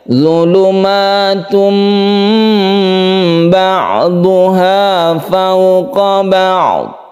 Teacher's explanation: Mengganti tanwin menjadi mim mati itu disebut dengan iklab. Apabila ada tanwin bertemu dengan ba, maka dirubah suaranya dari n menjadi m, dari tun menjadi tum.